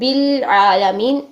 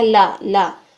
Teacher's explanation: لام یہ جو زبر کے ساتھ آ رہا ہے عالمین، اس کو بھی لا موٹا نہیں کرنا، باریک رکھنا ہے